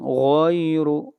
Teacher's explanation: غین کو موٹا پڑھیں گے اور را کو موٹا پڑھیں گے